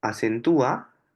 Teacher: luego de esa vocal cerrada tónica, viene una vocal abierta átona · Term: tilde de hiato